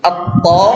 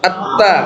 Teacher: Yang lidahnya ke atas, yang di ujung ya, pangkal gigi seri.